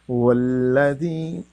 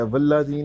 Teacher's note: آپ نے واو پہ غور کرنا ہے اور میں نے ہونٹوں کو گول کر کے پڑھنا